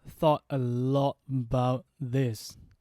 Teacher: the stress sound is on the word thought and the other word lot